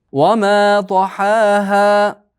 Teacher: Toha to yo'g'on, ha ingichka, ha ham ingichka.